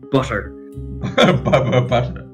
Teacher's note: butter has an aspirated B and an aspirated T. You're basically just breathing the word.